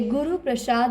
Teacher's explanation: गुरु प्रसाद में गुरु में रू पर जोर देने पर लघु होते हुए भी दीर्घ है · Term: बलाघात